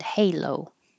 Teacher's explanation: Keep your lips rounded to make the O all the way to the end.